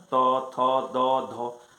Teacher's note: त बोलते हैं तो दोनों दांत के बीच में जो है वह जीभ आ जाता है